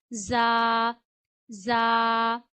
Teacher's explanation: जा सीटी की आवाज से अदा करना है। जा जा सीन जा और सीन का एक ही तलफ़ुज़ है, सीन में भी आपने सीटी की आवाज लानी है।